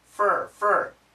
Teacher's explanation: Most Americans do not say for, we say fur, like her.